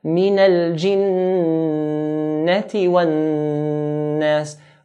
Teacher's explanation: Hold the noon in the word jinnah and nas. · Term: ghunna